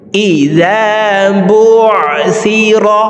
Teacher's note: আইন হরফকে হলকের মধ্যখান থেকে উচ্চারণ করব